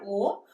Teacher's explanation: कंठ से आ है और ओठ से ऊ है, इन दोनों को मिला के हमारा ओ हो गया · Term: कंठोष्ठ